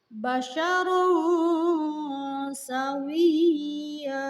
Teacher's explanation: Di sana terdapat tanwin menghadapi sin. Maka tanwin tersebut harus dibaca samar-samar. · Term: ikhfa